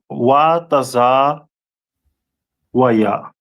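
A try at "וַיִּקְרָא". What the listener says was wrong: Not taza, but wa. Wakwa. We do the preposition. Waya. It's like you wakwa wa ya. Wakwa waya.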